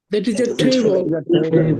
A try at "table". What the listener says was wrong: Table না, table. চ না খ হবে, table. চ না খ, table.